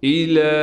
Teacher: هل لك، اور لام پر تھوڑا ٹھہراؤ بھی کریں گے۔ الى، لام پر کڑا زبر اور کڑا زبر کے اوپر مد ہونے کی وجہ سے اس لام کو 4 الف کی مقدار کھینچیں گے